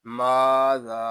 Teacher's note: میم کو ایک الف تک کھینچ کر پڑھیں گے کیونکہ یہاں الف مدہ ہو رہا ہے